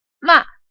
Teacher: The symbol is a little downward accent above the central vowel. And it's a quickly falling and fading tone · It starts off high, makes a forceful sound, but quickly falls and fades. · it's a quickly falling and fading tone like this. Ma. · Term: fourth tone